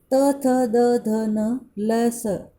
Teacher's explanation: दांत और जीभ से इसका उच्चारण किया जाता है, अतएव इन्हें दंत्य कहा जाता है।